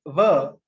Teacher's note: So the phoneme va, a voiced labiodental fricative